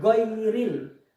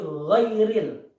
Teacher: Nah, sifatnya yaitu rukhawah, lunak, kemudian terangkat ya. Jadi gha itu enggak syiddah, tapi lunak ya, rukhawah.